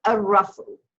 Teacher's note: you're not hearing the lam of the Aleph Lam because Ra is a sun letter.